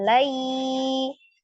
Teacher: sukun sebelumnya fathah di huruf lam lai dibacanya lebih dari satu kurang dari dua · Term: harfulin